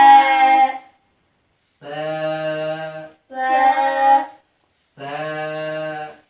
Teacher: ये जो सा है, सा को अदा करते वक्त सामने वाले ऊपर और नीचे वाले दांत इनके दरमियान में जुबान को रखकर अदा किया जाएगा और बिल्कुल नरमी से अदा किया जाएगा।